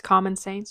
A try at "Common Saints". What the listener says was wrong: Almost sounds like you're saying Common Sans. Or Comic Sans.